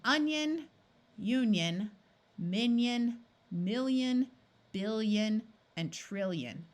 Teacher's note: Notice that in these words, there's no clear sound from the I. Instead, the N or the L in front of it changes the I to sound more like a Y